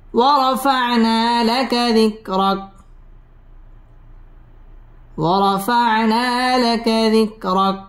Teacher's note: ওয়াও ঠোঁট গোল করে উচ্চারণ করতে হবে।